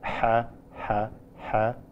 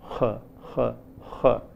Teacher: We listen to two sounds which are pharyngeal sounds in two languages, Arabic and Assamese in India. Whereas in Arabic, the pharyngeal sound is pretty low, like ha, ha, ha. In Assamese, the pharyngeal sound is heard to be a little high